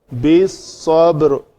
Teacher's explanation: با کو قلقلہ کر کے آگے را کا سکون